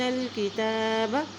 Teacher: تا کے اوپر کھڑی زبر ہے، ایک حرکت لمبا پڑھیں گے